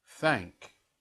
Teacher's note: So this is the voiceless TH without any vibration.